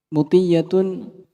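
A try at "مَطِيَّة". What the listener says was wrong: ma. Matiyatun matoya. Ma fathah. Bukan mu. Kalau muti'ah, itu nama akhwat, nama perempuan. Muti'atun dari muti'un ditambahkan tak marbutah.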